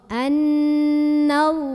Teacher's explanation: Kemudian lam jalalahnya ini dibaca secara tafkhim. Kenapa? Karena huruf sebelumnya yang nun berbaris di atas.